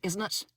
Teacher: Irish accent is more in the front of your mouth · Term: splashy T's